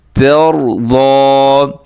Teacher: ترضا ایسے اگر کریں گے تو ساتھ تا بھی وہ بھی موٹا ہو جائے گا, تو تا کو موٹا ہونے سے بچائیے گا. را موٹا کر لیں, ضاد موٹا کر لیں, لیکن تا کو موٹا نہیں کرنا